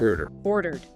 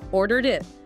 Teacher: So in ordered, because the verb stem order ends in a vowel sound R, the ending is just a D sound. And crucially, this D sound isn't a full extra syllable like in wanted. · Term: light D